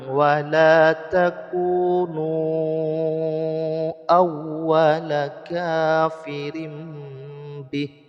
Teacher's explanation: ada mad asli bertemu dengan Hamzah di lain kalimat disebut dengan Mad Jaiz munfasil panjangnya lima harakat